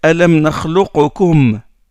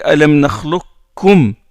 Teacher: On ne dit pas Alam nakhluqukum, mais on dit Alam nakhluqkum. Le qaf rentre dans le kaf.